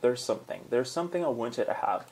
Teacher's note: a ponta da língua entre os dentes, o TH é vozeado